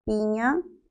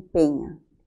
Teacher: La diferencia nada más está según la altura de la lengua